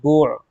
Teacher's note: عین اور ہا کو وسط حلق سے نکالنا ہے ، بعض لوگ جھٹکا دیتے ہیں، پڑھتے ہیں با عین پیش